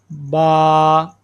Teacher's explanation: با، دونوں ہونٹوں کی تری کے ساتھ